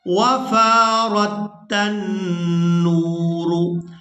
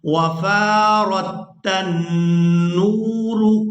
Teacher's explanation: یہاں پر ہم نے نون مشدد پر غنہ کرنا ہے، آواز کو ناک میں کچھ دیر روک کر رکھنے کو غنہ کہا جاتا ہے۔